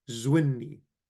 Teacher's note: the noon, first of all, is absorbing the lamad, and the lamad becomes silent